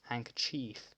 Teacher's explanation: pronounce the final vowel in 'handkerchief' more like an /i:/ than an /ɪ/ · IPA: /hæŋkətʃi:f/